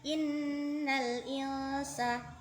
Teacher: di situ ada nun bertasydid, maka hukum bacaannya disebut gunnah